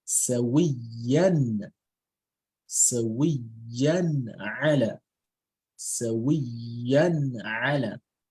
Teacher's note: So the Tanween is going to be pronounced clearly without ghunna. So instead of you saying Sawiyan ala, it will now be Sawiyan. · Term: Idhar